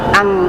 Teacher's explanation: yang nempel adalah pangkal lidah ke langit tenggorokan